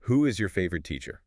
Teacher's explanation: Focus on the vowel sound. It's a long ooh sound.